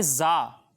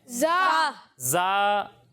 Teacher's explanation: زا اس میں سیٹی کی آواز آئے گی